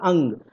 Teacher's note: जो आपका अनुस्वार था उसमें केवल नाक का यूज हो रहा है, ठीक है, मुंह का यूज नहीं हो रहा था, अंग, ठीक है।